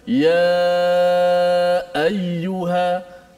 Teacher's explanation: selepas kita panjang ya, nak ambil ayyuha tu kan suara kita tertahan dulu pada makhraj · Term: sifat syiddah